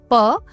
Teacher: हमारे मुख से जो वायु निकली वह होठों से टकराकर बाहर आई।